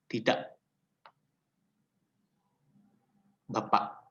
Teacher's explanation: Ini biasanya adalah bunyi suara yang hilang, seperti kata tidak. K-nya itu hilang, disebutnya bunyi glotal.